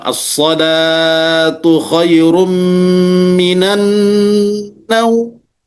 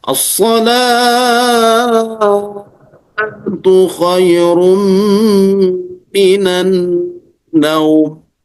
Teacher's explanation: Solatnya panjang, naumnya pendek.